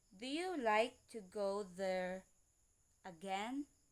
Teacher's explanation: the rising intonation is you have to raise slightly the pitch at the end of the sentence